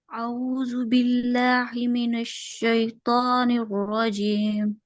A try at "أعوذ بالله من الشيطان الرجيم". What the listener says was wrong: बिल्लाही ही पढ़ना है हमने, हा के अंदर आइन नहीं लेके आना, ठीक है। हा हमने कहाँ से पढ़ना है?